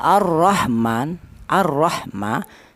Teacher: Ya, alasannya ada huruf hak mati. Jadi huruf hak itu dibaca jelas karena huruf hak termasuk hurufnya idhar. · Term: idhar halqi